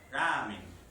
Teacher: Ahora, esta ra de ramen, algunos lingüistas la van a categorizar como aproximante, una mezcla entre la L y la R. Ramen. No se puede distinguir en un espectrograma.